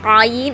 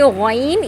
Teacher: قائن کے بعد ہے غین، اس کو موٹا پڑھیں گے، اس کو بھی حلق کے درمیانی حصے سے، لیکن موٹا پڑھیں گے، قائن کو باریک، غین کو موٹا، لیکن دونوں کو حلق کے درمیانی حصے سے ادا کریں گے، غین۔